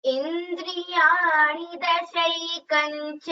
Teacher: you can combine and chant it as dashaikancha instead of the anuswara completely. Both ways are correct.